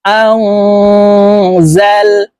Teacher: গুনাহ নুন সাকিনের পরে ইকফার হরফ জা আসছে এই কারণে এই নুন সাকিনকে নাকের ভিতরে লুকাইয়া গুন্নার সহিত পড়তে হবে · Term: ইকফা গুনাহ